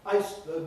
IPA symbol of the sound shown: aɪs